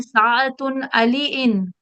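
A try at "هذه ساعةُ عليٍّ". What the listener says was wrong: एक चीज का ध्यान रखिए, देखिए आप जो है बार बार साअतुन तनवीन पढ़ रहे हैं, मुदाफ पे कभी तनवीन नहीं आएगी। हादिही सिंगल पेश, साअतु अलीयिन।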